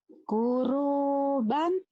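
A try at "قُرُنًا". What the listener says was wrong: Kurunan. Kuruban bukan. Titiknya di atas. Kurunan.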